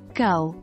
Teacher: the G sound in go requires you to position your tongue at the back of your mouth